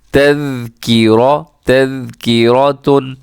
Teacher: اس میں را موٹا پڑھنا ہے، باقی میرے خیال میں ہاں باقی جتنے بھی حروف ہیں سب کے سب آپ نے باریک پڑھنے ہیں